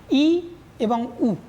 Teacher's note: আমাদের জিহ্বাগ্র সর্বোচ্চ স্থানে অবস্থান করে, তাই এদের বলা হয় উচ্চ স্বরধ্বনি